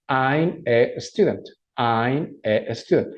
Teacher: Si observas que yo pego la pronunciación de las palabras, eso se llama linking words. Es como pegar una consonante, que en este caso es la M, con la vocal A. Pero la A, curiosamente, se pronuncia como una E, pero una E suave.